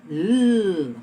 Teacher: What is the shape of my tongue when I say L? It is touching my gum ridge.